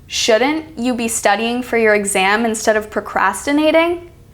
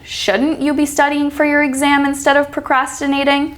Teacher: do you see how the word shouldn't is stressed